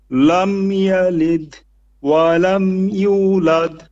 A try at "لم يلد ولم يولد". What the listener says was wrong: Lam yalid. Don't pause. Don't say lam yalid and pause. Say it one go. Lam yalid wa lam yulad.